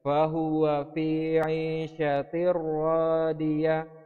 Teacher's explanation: jadi ada kasratain yang melebur ke huruf ra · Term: idgham bila gunnah